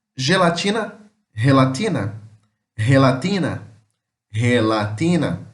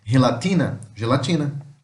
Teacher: o G ele tem é um som de G, mas puxa pro R